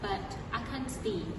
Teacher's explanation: notice that the intonation goes down at the end